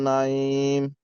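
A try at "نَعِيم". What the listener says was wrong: আইনটা, আইনটা উচ্চারণ হয় না, হ্যাঁ আপনার একটু আইনটা ঠিক করবেন। আইন উচ্চারণ হয় না, আবার কফটাও একটু, জি জি, হ্যাঁ।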